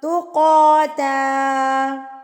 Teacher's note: یہاں پر آپ نے رکنا ہوتا ہے. جب آپ 2 زبر پہ وقف کریں گے یعنی کہ سٹاپ کریں گے 2 زبر پہ تو آپ نے یہاں پر ایک الف پڑھنا ہے یعنی کہ لمبا کر کے اس کو پڑھنا ہے